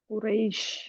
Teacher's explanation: जुबान की जड़ ऊपर ना आने पाए वरना शीन मोटा हो जाएगा